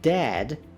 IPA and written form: dæd (Dad)